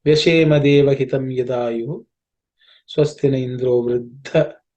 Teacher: The second dha in the iddha is to be aspirated because it's the fourth letter in the tha varga.